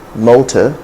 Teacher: motor it ends within a schwa